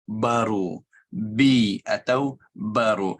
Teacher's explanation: Jadi ba, kita tutupkan dua bibir dan dalam keadaan tajam. Tetapi tidak tajam seperti huruf P atau dalam bahasa Indonesia atau Malaysia ada P macam pasti.